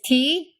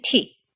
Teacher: it's also unvoiced and has a lot more aspiration than its english counterpart